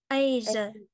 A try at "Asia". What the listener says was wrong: Cong lưỡi nữa. Asia. Asia.